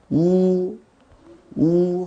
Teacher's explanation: 혀가 뒤쪽으로 가면서 나기 때문에 우리가 후설모음이라는 표현을 써요